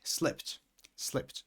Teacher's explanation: because slip ends in a p, then obviously when there is an ed at the end, the pronunciation is with a t